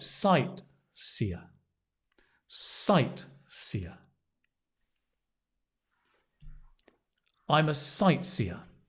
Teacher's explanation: Sightseer, the stress on the sight.